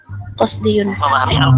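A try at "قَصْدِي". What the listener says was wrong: Bukan qasdiyun itu bacanya. Ya-nya itu ya mutakallim. Qasdi.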